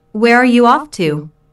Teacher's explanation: notice the falling intonation since this is an information question not a yes/ no no question